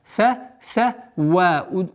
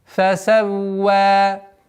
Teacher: Удвоение и удлинение в размере двух огласовок.